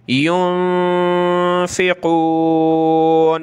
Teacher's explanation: माज़ा माज़ा युनफ़िक़ून, नून इसके ऊपर ये जज़म आ जाए तो ये नून साकिन कहलाता है, और नून साकिन को पढ़ते वक्त हमने साउंड बनाना है नाक में और गुनगुनाना है थोड़ा सा, जिसको इख्फ़ा कहते हैं।